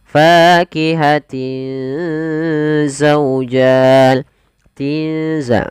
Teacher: Di sini juga ada bacaan ikhfa, yaitu tanwinnya bertemu dengan huruf zai. Maka dia harus kita baca dengan apa namanya? Ikhfa, disamarkan ke huruf zai.